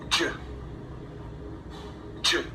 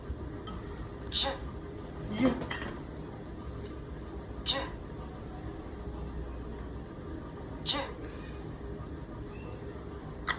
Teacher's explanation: the j is an affricate sound, so it's important to completely stop the air in your mouth and then immediately release it with friction.